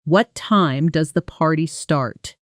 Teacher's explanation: Notice how my voice dropped down on start. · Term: falling intonation